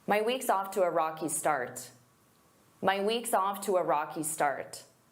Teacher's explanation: instead of saying to a I can combine those together with a w to tow. So I use that w to glide to my weeks off to a rocky start.